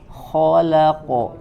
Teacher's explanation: Kho-nya sempurnakan kho, ya tenggorokan yang paling atas.